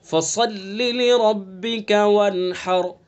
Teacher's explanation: وَانْحَرْ کی را پر ہوگی، چونکہ را ساکن ہے اور اس سے کہ پہلے ہا کے اوپر زبر ہے، تو اس لیے وانحر کی را کیسی ہوگی؟